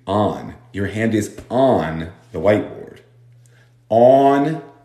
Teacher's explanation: como la mitad del país, va a pronunciar on, con un a